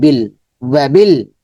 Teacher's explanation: বাটা লামকে ধরবি, যেহেতু লামের উপর তাসদিদ জজম আছে, বিল বি বাজের বি, লামটাকে ধরে ফেলেছে, বিল ওয়াবিল।